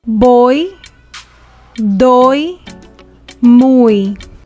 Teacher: Y is also pronounced as the Spanish vowel E when it is placed at the end of a word.